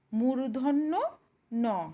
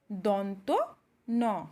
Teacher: এটি উচ্চারিত হওয়ার সময় মূর্ধাতে টাচ করছে আর সেকেন্ড যে নটি আছে এটি উচ্চারিত হওয়ার সময় দন্তে টাচ করছে